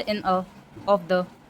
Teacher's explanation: तो जैसे इन अ, ऑफ द, ये सब अनस्ट्रेस्ड सिलेबल्स हैं. इन अ बोलने में कोई स्ट्रेस नहीं आ रहा है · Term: पिरिक